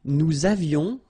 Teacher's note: little liaison, final S not pronounced.